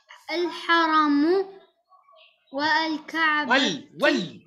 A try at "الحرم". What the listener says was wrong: الألف لا ينطق.